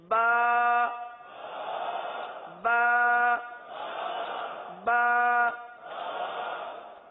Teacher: اب اس کی مقدار بھی ہے نا، حرف کی مقدار بھی ہے. یہ جو ہم حرف ادا کر رہے ہیں ایک الف تک کھینچ کے پڑھ رہے ہیں